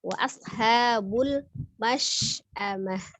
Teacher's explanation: karena ada huruf shin besar sifatnya tafasi ya, jadi nafasnya menyebar ya.